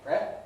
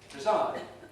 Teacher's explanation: if we compare the first vowel in president, where it's stressed, you can see it's pre. But when it's unstressed, it's weakened, preside. Some people weaken it to schwa and say preside.